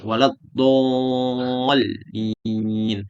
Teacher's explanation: makhraj hurufnya berpanjangan dari tepi lidah sehingga tepi ujung lidah makhrajnya huruf lam. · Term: istitolah